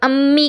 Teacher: मीम दोनों होठों की खुश्क के हिस्से से · जब भी अम्मी कहेंगी आपके ऊपर नीचे के दोनों होंठ मिलेंगे और होंठों का बाहर वाला हिस्सा जो सूखा हिस्सा है वो मिलेगा।